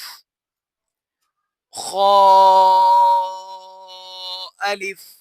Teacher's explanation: ख को पुर पढ़ा जाता है क्योंकि खूफ मुस्तालिया में से है